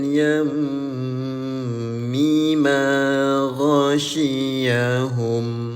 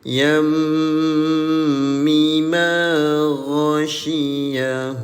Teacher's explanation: Mim berwarna merah muda dengan shadda disebut ghunnah, senandungkanlah selama dua harakah